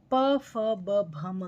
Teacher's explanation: जब हम ओष्ठ व्यंजन प, फ, ब, भ, म का प्रयोग करते हैं तो हमारी हवा आकर हमारे होठों के पास टकराती है